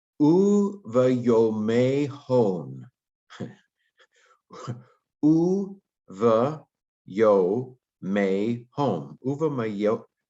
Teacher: that should be a vocal schwa after a long vowel like that